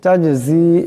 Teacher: এখানে জিম সাকিন, জিম কলকলা হরফ, আওয়াজটি একটি জটকা খাবে